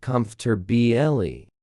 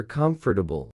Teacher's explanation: Most learners say comfortabile for syllables, but native speakers actually say comfortabile, just 3 syllables. The middle is swallowed. The or almost disappears.